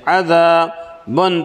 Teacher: الف سے پہلے زبر ہے، الف مدہ ہوگا، 1 الف کے برابر کھینچ کر پڑھیں گے